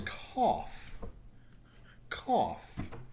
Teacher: So notice the last sound is an F sound. Is there a vibration in your throat? No.